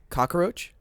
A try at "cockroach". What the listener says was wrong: No A.